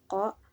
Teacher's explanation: menyentuh pangkal lidah dan dengan langit-langit bagian belakang